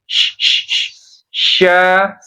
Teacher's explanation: jadi tafasyi itu udara menyebar di rongga mulut.